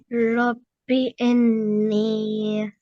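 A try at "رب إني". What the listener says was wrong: Okay, so you can do a little bit more nasal sound. You should stretch a little bit more over here.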